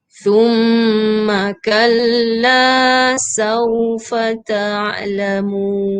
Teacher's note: Huruf sa keluarkan lidah dekat gigi.